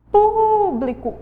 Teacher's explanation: o po é a sílaba mais forte